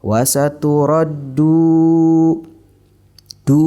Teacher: mad tabi'i atau mad asli dibaca panjang 2 harokat. Contoh, wasaturaddu, du dibaca panjang 2 harokat.